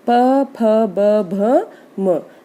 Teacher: और ओष्ठ्य होता है जब दोनों होठ मिलकर, अन्य कहीं कुछ भी स्पर्श नहीं होगा, केवल दोनों होठ मिलकर उन व्यंजनों का उच्चारण करते हैं।